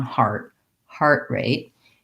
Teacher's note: wanted to know about heart rate so heart rate basically is a compound noun where i'm going to have almost equal stress on both words primary stress on heart